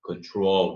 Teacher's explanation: dark L no final da palavra, no final de sílaba